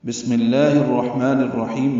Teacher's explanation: بسم اللہ الرحمن الرحیم میں سین ساکن پہ ہم سے، میم کی زیر کی وجہ سے لام اسم جلالہ باریک پڑھیں گے اور 2 حرکات لمبا کریں گے۔